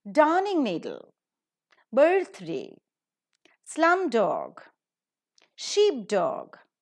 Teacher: you could find that the stress is always on the first syllable